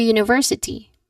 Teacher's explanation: Stress that third syllable that university.